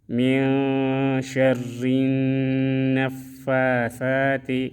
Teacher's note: من میں اخفا کریں گے، شر میں را باریک پڑھیں گے اور ادھر نون مشدد میں غنہ کریں گے، من شر النفاثات۔